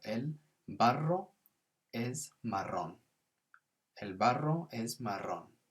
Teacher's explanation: And we've got that nice rolling R in marrón.